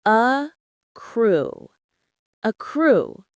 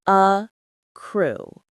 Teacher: The stress is on the second part.